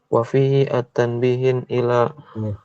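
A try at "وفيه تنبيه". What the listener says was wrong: kalau enggak ada alif lam berarti tan. Wa fihi tanbih, bukan wa fihi at. Wa fihi tan.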